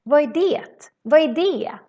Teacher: Sometimes we ignore the t's in the end of the words.